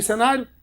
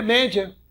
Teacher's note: Média, em que o I é uma semivogal, fraquinho, quase não é falado, e o A é vogal.